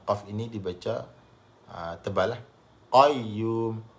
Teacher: Bahagian belakang lidah tu, pangkal lidah tu dia naik, menekan pada langit. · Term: huruf qaf